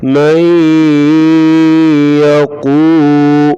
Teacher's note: یا زبر یا مئی، قاف پیش واو قو، قاف کو پر پڑھیں گے موٹا، واو کو پڑھتے وقت ہونٹ گول کریں گے۔